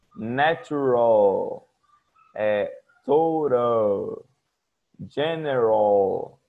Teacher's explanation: Em inglês, mais do que o som de U, é usado um L mesmo, com a ponta da língua